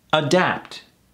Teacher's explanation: Two syllables, emphasis on the ah.